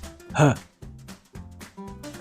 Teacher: the H is usually uh pronounced in Dutch uh including the voice so it is more of a sigh